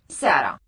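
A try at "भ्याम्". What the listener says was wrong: Close. About as close as you could be. The bis is correct, and the da is correct. Pyam. For the dual, that one always has a long vowel in it. Da pyam.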